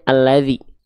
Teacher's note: Nah, jadi intinya kalau teman-teman mendapati ada bentuk seperti hamzah wasol, seperti alif di awal ayat, setelahnya adalah huruf lam, ini namanya hamzah wasol. Hamzah wasolnya dibaca pakai harokat fathah. Maka dibacanya alladzi, bukan ulladzi, bukan illadzi.